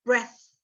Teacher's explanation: ini breath pakai yang voiceless, tapi E-nya dibaca eh